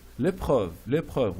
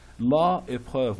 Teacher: L'épreuve, les, et, when we cancel e or a from the article, le, la, like that, and because we have a vowel in the word, Okay, we pronounce this article, le or la, with this vowel letter cancelled or cancelled vowel letter, with the next word as only one word.